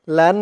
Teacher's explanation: হরকতের পরে নুনের উপরে তাসদিদ আসছে তাই ওয়াজিব গুন্না